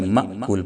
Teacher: یہ الف کے اوپر چونکہ جزم آ گیا ہے تو اب یہ الف نہیں ہے، یہ حمزہ ہو گیا ہے، اور حمزہ چونکہ ساکن ہے یعنی اس کے اوپر جزم ہے تو اس لیے اس کو جھٹکے سے پڑھیں گے۔ معقول نہیں پڑھیں گے بلکہ مأکول، فَجَعَلَهُمْ كَعَصْفٍ مَّأْكُولٍ۔